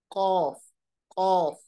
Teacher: अब देखिए कैसे मैंने उसको अदा किया। कौफ, एक तो मैंने होंठों को गोल किया, और दूसरा मैंने पढ़ते वक्त जरा आवाज मोटी रखी